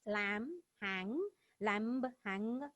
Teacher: Final B and G ceased to be pronounced after nasal sound.